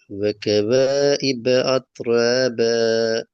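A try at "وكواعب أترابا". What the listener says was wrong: இதுல ஐன் முறிஞ்சி வருது, உடையப்படாது, வளைஞ்சு வரணும். وكواعب وكواعب வளையணும். அப்பதான் பின்னுக்கால வர அலிப் அந்த ஐனிலிருந்து வேறுபடுத்தப்பட்டதா வரும். وكواعب أت وكواعب أت ஐ வளையிறது அ நார்மலாக வர்றது.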